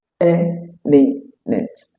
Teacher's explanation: Then the final syllable takes a schwa sound. It is important to take note that all these words has the stress on the very first syllable.